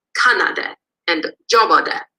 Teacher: But they're subject to replacive tone in different morphological categories. So the imperfective appears to be marked with a de suffix along with a high-low tone on the base. So we get kanade and jobade, and it's replaced the tone of the root.